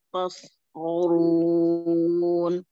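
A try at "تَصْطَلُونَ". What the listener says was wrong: Hati-hati, huruf tanya huruf tipis, jangan terpengaruh ke huruf sot. Jadi tadi terbawa seperti tanya jadi tebal. La'allakum tasqolun. Tasqolun.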